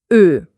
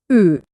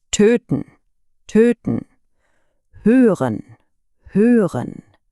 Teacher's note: Und aus dieser runden Position versuchen Sie jetzt den Laut E zu sagen. Der Klang kommt von vorne, aber die Lippen bleiben rund.